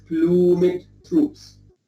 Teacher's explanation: here I pronounce the E because in my edition Shakespeare has accented the E